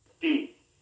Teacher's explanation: For a Spanish T, the tip of the tongue goes against the upper teeth.